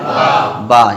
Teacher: یعنی دونوں ہونٹوں کی تری سے با ادا ہوتا ہے، اسے کہتے ہیں تر حصہ۔